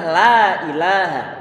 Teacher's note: Karena lam dia sifatnya adalah tipis istifal, bukan isti'la.